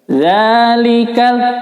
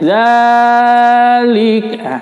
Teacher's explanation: Perhatikan di sini, mad ya, bacanya 2 harokat karena ada fathah tegak atau disebut juga fathah panjang atau fathah berdiri, terserah menyebutnya. Zalikal, karena ini mad biasa ya, ini bacanya hanya 2 harokat di ayun saja. Zalikal, kalau sudah lebih dari 2 harokat itu jadi tidak enak didengar dan juga menyalahi kaidah ya.